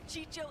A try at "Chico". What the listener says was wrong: It's Chico, not Chicho, dumbass. Why this girl always pronounce the name wrong?